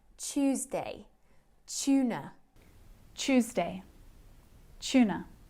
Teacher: when we join a t and a yes sound sometimes we blend these together